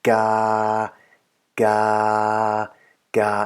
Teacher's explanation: I tried to hold the tone on the same level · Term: middle tone